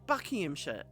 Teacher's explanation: Buckinghamshire, it's sh at the end. We don't bother with shire, it's sh